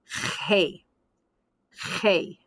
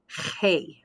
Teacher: you're going to speak from the back of your palate so that soft muscular tissue in the back of your palate vibrates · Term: soft g